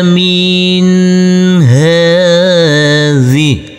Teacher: Huruf nun bertemu dengan huruf ha. Maka huruf nun-nya kita baca dengan terang atau jelas.